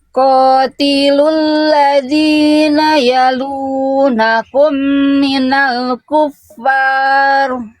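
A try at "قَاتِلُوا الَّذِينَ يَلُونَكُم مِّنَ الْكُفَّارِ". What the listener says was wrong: Sebelum lanjut, Bunda, di sini ada mim sukun ketemu mim lagi menghasilkan tasdid. Kira-kira tahu ada hukum tajwid apa di sini? Iya, idgham miminya kira-kira kesalahan apa? ditekan Nah, itu udah kurang ditahan ya.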